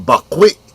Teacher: Glottal stop at the end